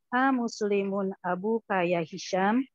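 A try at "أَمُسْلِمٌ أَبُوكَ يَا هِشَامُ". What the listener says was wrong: Aywa, ya Hishamu. A-nya dipendekin. Amus.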